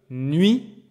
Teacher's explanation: Tu peux entendre que dans Y, nuit, there is the sound U. But there's also kind of a Y. There's almost like a consonant vibe to it. This is why we call it semi-voyelle.